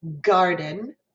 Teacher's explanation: garden goes even farther back with kind of the hump of my tongue closer to where my uvula is and my soft palate it's starting to move closer towards that back part of the